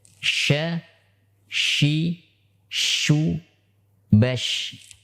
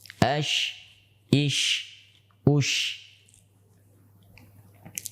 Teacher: Maka huruf shin memiliki sifat hamas karena banyaknya nafas yang keluar pada saat diucapkan. · Huruf shin sekarang dikeluarkan melalui tengah lidah. Melalui tengah lidah yang diangkat ke langit-langit.